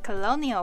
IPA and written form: kəloʊniəl (colonial)